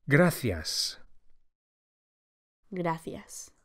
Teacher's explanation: The C of gracias is pronounced as an English TH, as in thanks